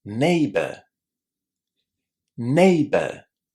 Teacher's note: This last syllable is really, really short, and if you would like to say the letter R there at the end, you definitely can.